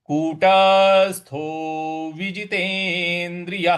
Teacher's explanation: य के आगे जो विसर्ग है उसमें ह का उच्चारण होगा